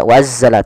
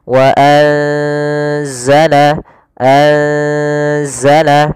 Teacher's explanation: Maka cara membacanya itu kita samarkan nunnya kepada huruf zai. Bukan dibaca wa anzala, tapi juga bukan nggak bisa dimasukkan ke za, wazzala, tidak bisa. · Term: ikhfa